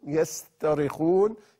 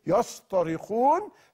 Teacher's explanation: غير كافيه لبيان الهلع وشده الصراخ والعويل الذي هم في فيه فحول التاء المرققه الى الطاء المفخمه حتى تدل على اعلى درجات المعنى في الصراخ فقال سبحانه وهم